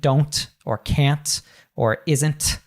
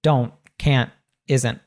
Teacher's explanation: it's a sound that's cut off at the back of that we cut the T off at the back of our throat · and then don't we have a t at the end there usually when we have this NT at the end of words we'll pronounce that t as what's called a glottal T it's a sound that's cut off at the back of that · we don't say that strong T in American English